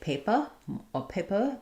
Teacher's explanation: British English, where R is generally silent